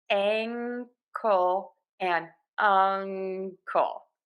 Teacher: tip of the tongue is down back of the tongue is pulled high up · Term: NG sound